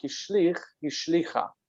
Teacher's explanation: keeps a long vowel because the accent doesn't shift